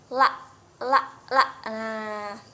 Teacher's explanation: terjadi pertemuan antara ujung lidah dan Gigi